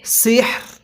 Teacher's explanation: রটা হালকা উচ্চারণ করব, হাটা পরিপূর্ণ উচ্চারণ করব